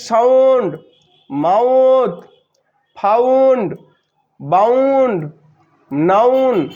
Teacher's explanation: তাহলে এখানে ও এবং ইউ এটা উচ্চারণ হচ্ছে আও